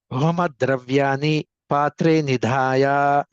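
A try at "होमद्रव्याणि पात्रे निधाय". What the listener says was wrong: మీరు హోమద్రవ్యాన్ని అనేటువంటి చోట ఆ నకారాన్ని నాలుకని అంగిటికి తాకించండి, అణా కింద మారుతుంది. హోమద్రవ్యాణి.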